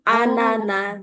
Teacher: cuma ananya bu biasa bukan anna tapi anana iya karena enggak ada tasdid